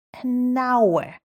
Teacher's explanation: hour starts with an H, but H is silent. So it actually starts with a vowel sound